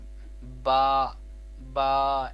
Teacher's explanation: با دونوں ہونٹوں کے تر حصے سے ادا ہوتا ہے۔